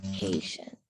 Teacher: The TIENT is actually going to make a sh sound, not a T sound.